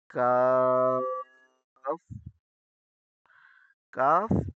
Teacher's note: کاف منہ کو کھول کر نرمی کے ساتھ اور باریک کر کے پڑھا جاتا ہے۔ کاف، کاف نرمی اور باریکی سے پڑھتے ہیں۔